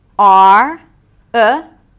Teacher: we hear the R cause it's an R-colored vowel